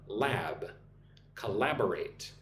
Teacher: Look at the word collaborate. Four syllables. Put the emphasis on the second syllable.